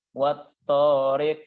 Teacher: Qaf dianggap sukun dan dia harus qalqalah